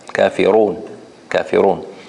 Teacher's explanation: And the word al-kafirun, we said the ra is stronger, mufakhama, the ra, kafirun.